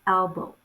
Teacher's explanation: The V, or the phoneme B, the bold B, represents the voice bilabial stop phoneme B